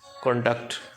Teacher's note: For the word conduct used as a verb, where is the primary stress placed? On the second syllable, conduct. What is the purpose of an issue question in the testing environment?